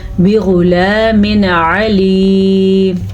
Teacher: نون تنوین کے بعد حروف ہلکی میں سے اگر کوئی حرف آ جائے تو وہاں پہ کسی قسم کا کوئی نہ غنہ ہوتا ہے، نہ رکتے ہیں، نہ اخفا ہوتا ہے